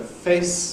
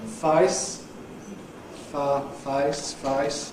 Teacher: Standard [ eɪ ] shifts to Cockney [ ʌɪ ]. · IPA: fʌɪs